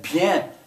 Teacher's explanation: that bien that last letter it kind of goes up in your nose